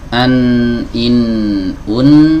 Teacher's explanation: huruf nun itu keluar dari ujung lidah bertemu dengan gusi Nah kalau kita keluarkan dari sini saja tanpa menyertakan e gunah